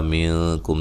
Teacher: نون ساکن کا اخفا مع الغنہ ہے۔ کم، یہاں میم ساکن کا اظہار ہے، غنہ نہیں کریں گے۔